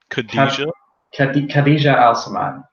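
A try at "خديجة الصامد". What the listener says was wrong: Assamite. It's a AH sound, not AL. Khadija Assamite.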